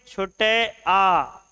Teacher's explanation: छोटा आ जब बोलते हैं तो जीभ का मध्य भाग क्रियाशील होता है